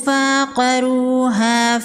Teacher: واو مدہ ہے، 1 الف کے برابر کھینچ کے پڑھیں گے۔ قاف حروف مستعلیہ میں سے ہے، قاف کو پر پڑھیں گے، را پر پیش ہے، را کو پر پڑھیں گے۔